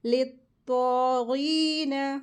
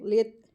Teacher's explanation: तो heavy letter है और गैन भी हैवी लेटर है। लित, तो के लिए ज़बान को मोटा करेंगे, लित, तो इस तरीके से, ठीक है।